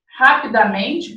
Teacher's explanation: a minha sílaba tônica dessa palavra não é mais o rá, é o men